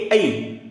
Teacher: कंठ तालव्यामध्ये ए आणि ऐ बघा उच्चार कुठे होते ए ऐ टाळू आणि कंठ याचा उच्चार होतोय